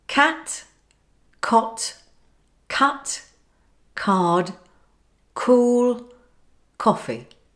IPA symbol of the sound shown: k